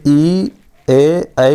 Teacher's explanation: तो हम लोग जीभ का आगे वाला भाग से उच्चारण करेंगे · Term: अग्र स्वर